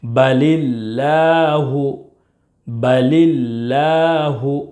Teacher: لفظ اللہ کے لام سے پہلے زیر ہے، اس لیے لفظ اللہ کے لام کو باریک یعنی پتلا پڑھیں گے